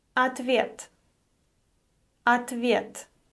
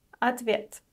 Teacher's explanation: О is unstressed and is pronounced as а.